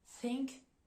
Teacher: on va pas mobiliser les cordes vocales contrairement au deuxème th on va placer en fait la langue entre les dents il y a aucune vibration au niveau des cordes vocales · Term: TH sourd